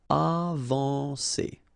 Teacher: when you combine A and N, you get the nasal en